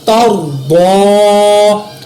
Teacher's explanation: را کو بھی پر پڑھا، ضاد کو بھی میں نے پر پڑھا۔